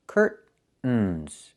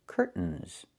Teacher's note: I can use a stop T and say curt. Stop the air. Put the tongue up. Curtains. And go directly to the N.